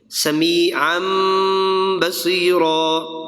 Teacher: نون ساکن اور تنوین کے بعد آئے گا با، تو اسے میم سے بدل دیں گے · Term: اقلاب